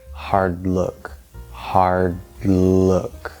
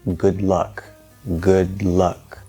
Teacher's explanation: the tongue is going to stop the air flow and then we're not going to release the d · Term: stacking effect